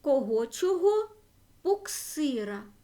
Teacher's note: родовому відмінку наголошений Тому це тверда група буксир кого чого буксира ир наголошений в родовому відмінку